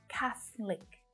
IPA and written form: 'kæθ lik (catholic)